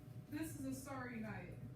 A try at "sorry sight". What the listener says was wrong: You asked her, you said night.